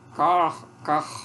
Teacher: Você sente lá no finalzinho a uvulazinha vibrando, então é uma vibrante uvular.